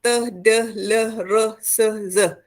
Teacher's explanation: Gusi berperanan dalam pengeluaran bunyi seperti teh, deh, leh, reh, seh, zeh dan sebagainya dengan bantuan hujung lidah yang berfungsi membuat penyekatan.